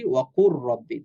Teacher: সুকুন বিশিষ্ট হরফটা আমরা হাইড করে ফেলি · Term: ঈদগামের